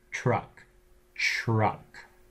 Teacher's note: So you end up getting something which is palatalized, Palatalized means it's moved from the alveolar ridge further back. That is, your tongue hits further back than it normally would on the alveolar ridge to the palate. · Because the R is further back in the mouth than the T, it also pulls the T back, just like it pulls front vowels back. So you end up getting something which is palatalized, Palatalized means it's moved from the alveolar ridge further back. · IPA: [tʲ]